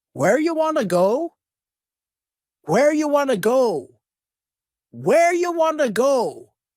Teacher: go this is a similar reduction to our first question you becomes Y and want to becomes w